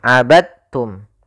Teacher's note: Ya, meskipun dal termasuk huruf qalqalah karena dia memiliki makhraj yang sama dengan ta, maka diidghamkan dalnya kepada huruf ta sehingga dibaca dengan huruf ta-nya langsung.